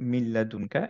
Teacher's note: এখানে ছিল হচ্ছে মিন লাদুনকা। মিনের নুনটার পরে যেহেতু লাম ছিল, এর জন্য এখন মার্জ হয়ে গেল নুনটা লামের সাথে।